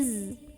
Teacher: karena roknya ini ada baris dan baris yaitu di bawah kasrah maka cara membunyikannya adalah dibaca dengan tipis artinya pangkal lidah kita datar saja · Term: tarqiq